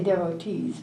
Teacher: the accent on the first syllable